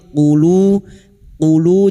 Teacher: wau sukun dua harakat mad thabi'i dua harakat kita panjangkan